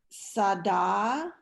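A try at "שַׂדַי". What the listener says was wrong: Don't forget the yud on the end.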